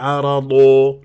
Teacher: قلت غلط ارجع و تاكد من المخرج احدى الحافتين او او الحافتين مع ما يحادي من الاضراس العليا وفخمه هنا مرتبه ثانيه لانها مفتوحه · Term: الضاد